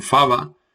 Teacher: Aquí tenemos el mantenimiento de la F inicial latina